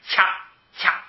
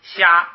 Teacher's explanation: 掐，它一开始有个爆破，虾没有前边那个爆破